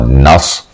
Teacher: آپ نے صاد پڑھنا ہے، موٹا کر کے پر کر کے پڑھنا ہوتا ہے